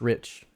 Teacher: is because it is relaxed the tongue is relaxed so actually your tongue is maybe not quite as high not quite as forward in the mouth because it's relaxed